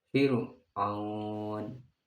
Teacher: Untuk tarkik selain harful isti'la, contohnya Fir'aun dibacanya tipis